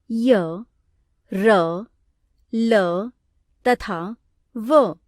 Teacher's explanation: इन सभी व्यंजनों के उच्चारण में उच्चारण अवयवों द्वारा मुख में अवरोध तो उत्पन्न किया जाता है, पर अवरोध की मात्रा कम होती है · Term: अंतस्थ व्यंजन